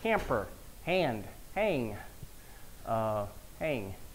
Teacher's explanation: Vowel nasalization, I heard this some in some southern accents